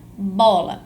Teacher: na palavra bola, a sílaba tônica da palavra bola é a sílaba bo. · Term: acento tônico